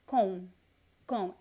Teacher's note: there is no m sound there is like a soft uh diphthong con com it is a naso sound so the m here